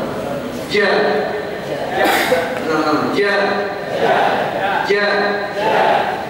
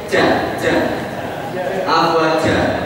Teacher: Nah, bedanya kalau huruf shin tadi tidak nempel di langit, huruf ja itu nempel di langit dan pengucapannya kuat, tebal.